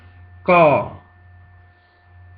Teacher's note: It's like a soft K between a G and a K. So it's not aspirated at all. It's like Spanish G, K.